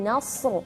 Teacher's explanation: Nasru tetap huruf nun tipis, shad pun tetap tebal seperti dan memiliki sifat-sifat yang tebal.